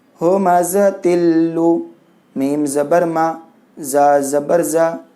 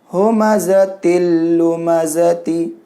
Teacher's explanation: تنوین کو لام میں ادغام کیے بغیر گنہ کے